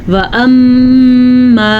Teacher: میم کے اوپر شد آ گئی ہے تو یہاں پہ غننے کی کیفیت پیدا ہوگی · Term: غنہ